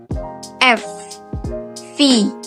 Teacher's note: labiodental adalah hambatan yang terjadi di bibir bawah dan gigi atas. Misalnya pada huruf F dan V.